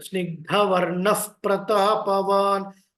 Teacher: whenever there is a visarga followed by pa or pra, so we must pronounce in such a way that fakaram should be uttered.